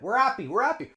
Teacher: notice how actually happy we drop the H a little bit